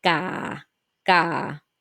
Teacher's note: The low tone start at the low pitch and remain relatively flat at the end.